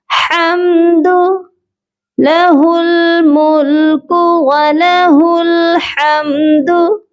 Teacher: इस वाले हा को हलक के दरमियानी हिस्से से अदा किया जाता है।